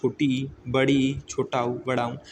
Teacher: जो समृद्ध स्वर होते हैं इसमें क्या होता है कि मुख लगभग बंद होगा